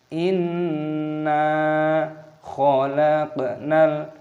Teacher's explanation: Perpanjang bagian nun hanya dua ketukan, jangan terlalu panjang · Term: mad thabi'i